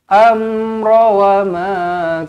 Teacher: Amra mim mati izhar syafawi dibaca dengan jelas, dimatikan dengan jelas, dimatikan dengan teranglah.